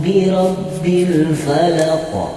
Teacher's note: Huruf ra berharkat fathah dihukumi ra tafkhim dibaca tebal diikuti bibir agak maju.